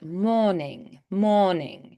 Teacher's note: So we just kind of neutralize that little R sound. It's like you're not there. One thing I sometimes tell people is think of swapping the R for an like water instead of water, water.